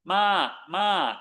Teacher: it's got a falling tone. Notice it's not midtone. The ending is that short G.